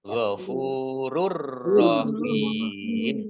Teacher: Masuk ke huruf ro ditandai ro-nya ada tasdidnya. Ro-nya dibaca double tetapi tidak mendengung. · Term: idgham bila gunna